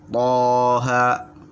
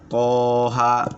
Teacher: Ya, dua harokat. Tidak boleh panjang, tidak boleh dipanjangkan.